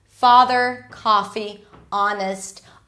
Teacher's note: So all of those words that are spelled with O are actually pronounced with ah.